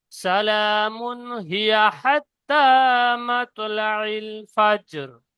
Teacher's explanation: সালামুন, ওখানে মিমের উপরে তানবিন পড়ছি, তারপরে হরফে হালকির মধ্যে হা এসে গিয়েছে, সেই জন্য সালামুন পড়ছি, ওখানে গুন্না করছি না, বিনা গুন্না ইজহার করে পড়তে হচ্ছে।